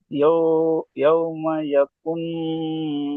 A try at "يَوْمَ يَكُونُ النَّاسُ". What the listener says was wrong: ইয়াকুন হবে না, ইয়াকু কফ পেশ কুয়াউ মাদ্দা টান দেন। ইয়াউমা ইয়াকু নাসু, নুন আলিফ মাদ্দা একাই টান দেন। নাসু ইয়াউমা ইয়াকুনুন নাসু।